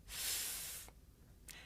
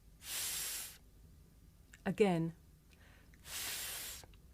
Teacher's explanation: The third fricative is th. This is a voiceless consonant.